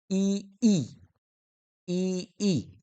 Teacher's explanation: तालव्य म्हणजे आपल्या तालूचा किंवा टाळूचा वापर होत असतो